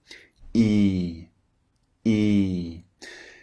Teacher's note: first one is long and the second one is short so the first vowel e as in leave you can hear it longer than normal e e look at the shape of the mouth it's wide